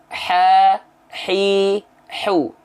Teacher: kalau tepat dari tengah tenggorokan maka dia akan mengalirkan hams ya mengalirkan nafas yang karakteristiknya berbisik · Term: H kecil